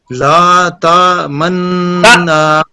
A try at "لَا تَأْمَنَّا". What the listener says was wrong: حمزہ ہے نا، لا تأمنا،